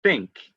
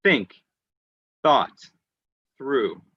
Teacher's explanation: hand the word think when you do that think the th your voice your your throat does not move that's why we call it voiceless there's no air going through think like that okay so some